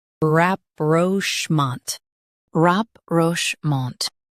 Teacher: Stress schmant and keep rap light.